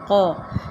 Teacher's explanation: یہاں پہ قلقلہ ہوگا، اب قاف کے اوپر جو زبر ہے اس کو ادا کریں گے